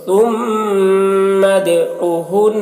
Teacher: دال میں قلقلہ، کیونکہ دال حروف قلقلہ میں سے ہے